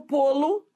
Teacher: você vai ver que esse lo vira Lu muda de som